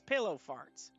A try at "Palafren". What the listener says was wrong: Extra syllable in there. Palafren's all one word.